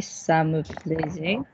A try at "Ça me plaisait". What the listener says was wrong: You're stopping a vowel and we're not moving on to the next word. You're stopping a vowel and we're not moving to the next word. Just keep going until you're ready for the next word.